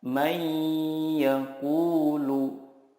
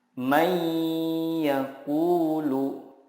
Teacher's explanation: meleburkan nun sukun ke huruf berikutnya dan disertai gunnah yang dipanjangkan 2-3 harokat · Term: idgham